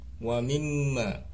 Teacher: ada mim di tasdid, namanya gunnah, dibaca berdengung